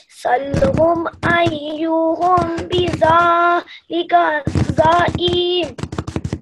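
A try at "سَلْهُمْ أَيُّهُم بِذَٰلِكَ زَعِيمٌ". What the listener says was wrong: Not za'im, za'im quickly, because after za there is no alif. Okay, alif madda, alif elongation is not there. So بِذَلِكَ زَعِيمٌ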